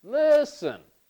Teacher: So for listen, the stress is on the first syllable. Da. Listen.